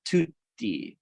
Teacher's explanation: So when you're doing IPA transcription of Italian, you actually do transcribe, you'll see both consonants transcribed to show you that you really have to do this kind of complete closure. So for a word like tutti, there's really a longer stop. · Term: double stop